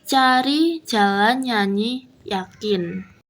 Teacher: Tempat artikulasi tengah lidah dan langit-langit keras. Keterangannya yaitu nya. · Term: palatal